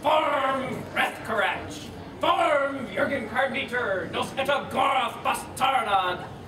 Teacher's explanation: in Dwarvish, you are supposed to roll your R's by wiggling your uvula